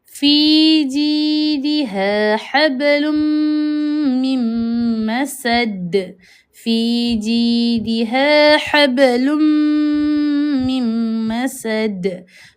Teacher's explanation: Kalau ba dekat pertengahan juga ada sebagai qalqalah. itu qalqalah sughra lah itu lantunan yang kecil